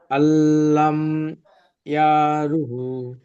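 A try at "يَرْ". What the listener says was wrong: আল্লাম ইয়ারাহু। ইয়ারু হবে না, ইয়ার। ইয়া যাবার ইয়া, র যাবার র, ইয়ার। হাওলটা পেশ হু, ইয়ার।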